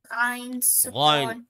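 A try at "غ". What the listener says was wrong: not gain, not gain. It is gain, heavy letter. No, it is gain. I said gain. Make your lips rounder. Gain. I'm saying make your lips rounder, please. Gain.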